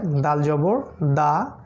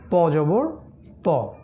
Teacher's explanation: জিহ্বার অগ্রভাগ সামনের দাঁতের পিছনের অংশ ধাক্কা লাগবে